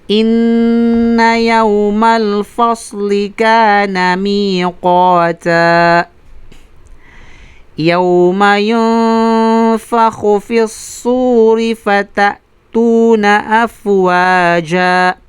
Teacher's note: Ang ikhfa ay tarqiq. Manipis na ikhfa sa kadahilanan, ang kasunod na nun na sakin na ay fa. At ang fa ay kabilang sa manipis na litra.